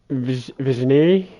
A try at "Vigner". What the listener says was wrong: Vigner. No G, the G is silent. Vigner. But yeah, it's Vigner. Yeah, the G is silent, and yeah, I don't know.